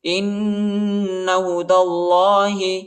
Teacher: نون پر شد آیا ہے، اور ادھر غنہ کریں گے